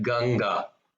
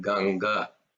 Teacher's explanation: The third ga is like ganga. It's ga, but it's not a mahaprana. There's no emphasis on that